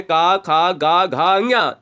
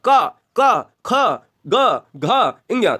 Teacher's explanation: जो व्यंजन कंठ से बोले जाते हैं वो कंठी स्पर्श व्यंजन कहलाते हैं